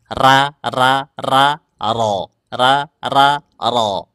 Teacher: Ujung lidahnya tetap di langit-langit depan. Hanya saja pangkal lidahnya dimaksimalkanya.